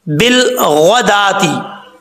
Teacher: बा को जब लाम से मिलाएंगे बीच में अलिफ जो है वो गिर जाएगा, इसको नहीं पढ़ेंगे। · गैन हरूफ मुस्तालिया में से है, पुर पढ़ा जाएगा